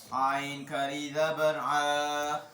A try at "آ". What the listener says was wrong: عین کا نہیں حمزہ اب سے سوال ہے عین اور حمزہ کی آواز آپس میں کیوں ملتی ہے؟